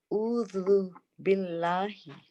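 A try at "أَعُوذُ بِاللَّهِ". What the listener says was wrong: ज़बान पीछे जा रही है आइन के लिए प्रॉपर, और भी जा सकती है, और भी जा सकती है आई थिंक।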